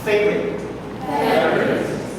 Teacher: This word, you will see 1, 2, 3. Looks like there are 3 syllables. But actually, when you hear people pronounce it, it's only 2.